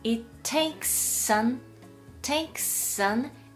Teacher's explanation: S▁と▁A▁がくっついて▁takes▁an▁hour,▁N▁と▁hour▁の▁A▁がくっついて▁takes▁an▁hour▁となりますね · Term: 連結